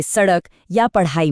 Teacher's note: हमारी जीभ तेजी से ऊपर तालू से टकरा कर नीचे आती है। जिससे एक उछाल वाली आवाज पैदा होती है। जैसे सड़क या पढ़ाई में। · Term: फ्लैप्ड कॉन्सोनेंट्स